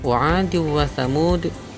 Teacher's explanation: idgham bi khunnah karena ada tanwin bertemu dengan huruf wawu.